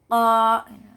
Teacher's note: Jadi ketika mengucapkannya pangkal lidah bertemu dengan langit-langit mulut. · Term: huruf q